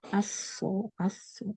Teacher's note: Shad Zaid dan Sin itu ujung lidah yang hampir bertemu dengan ujung gigi seri Bawah